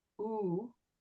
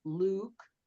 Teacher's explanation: the lips are going in a smaller circle and um ooh like it's held a little bit longer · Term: long ooh sound